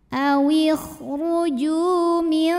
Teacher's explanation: nun sukun dibunyikan samar-samar, siap-siap menuju dal disertai bunyi dengung. Nah, ini dengungnya sedikit karena dal makhrajnya masih dekat dengan nun. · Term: ikhfa aqrab